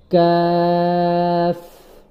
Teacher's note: কাফটা ওই জিহ্বার গোড়া থেকে একটু সামনে আগিয়ে আগিয়ে আপনার কাফটাকে উচ্চারণ করতে হবে